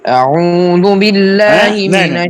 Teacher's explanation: اعوذ حمزہ کو لمبا بھی نہیں کرنا اور منہ کھول کر بولے